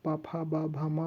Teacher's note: पा फा बा भा मा बोलते हैं, तब ओठ का आप सहारा लेते हैं, इसीलिए इसका उच्चारण स्थान क्या हो जाएगा, ओष्ठ हो जाएगा, ठीक है।